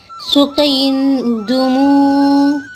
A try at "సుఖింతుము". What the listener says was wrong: సుఖి సుఖి సుఖియంతుము. మళ్ళా దూ కాదు, తూ.